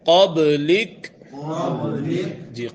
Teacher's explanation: قبلک کاف کی زبر ختم ہو جائے گی، کاف ساکن ہو جائے گا۔ قبلک جی، قاف موٹا، با میں قلقلہ۔